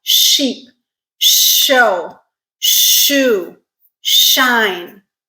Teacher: Now we're moving closer to the middle of the mouth, the roof of our mouth, the palate. These are called palatal sounds because our tongue, the constriction, the place of constriction is around that hard palate.